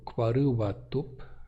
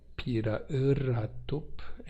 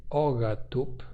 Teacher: diante de vogal, especialmente, estas oclusivas sofrem lenição e viram W, R e G, respectivamente